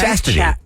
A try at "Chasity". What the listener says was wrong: No, there's no T there. Chasity.